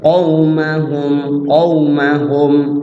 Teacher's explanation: Mimnya sukun, jelas dibaca di bibir. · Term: idhar syafawi